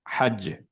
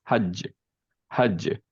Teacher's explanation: কলকলা দিলাম বাতাস বের হলো না এবং ফাস্ট স্টপ করলাম কারণ কলকলা দেওয়ার সময় যে ফাস্টের যে স্টপটা সেটা অনেক ফাস্ট